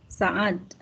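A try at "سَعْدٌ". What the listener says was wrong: Iya, Sa'dun. Kita orang Indonesia sering menyebutnya Sa'ad ya, padahal asalnya Sa'dun ya. Namanya Sa'dun. Agak berat memang bacanya Sa'dun. Dia namanya Sa'dun.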